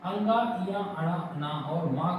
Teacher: अंगा या अणा ना और माँ को बोलने में हम क्या करते हैं, नाक का भी उपयोग करते हैं। इस वजह से ये अपने वर्ग के उस ध्वनि उच्चारण का नासिक के भी बन जाते हैं।